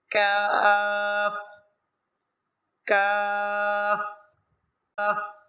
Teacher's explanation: قاف کے مخرج کے متصل، یعنی بالکل قاف کے مخرج سے تھوڑا سا ہٹ کے اس کے ساتھ ہی کاف کاف کاف یہ ادا ہوتا ہے.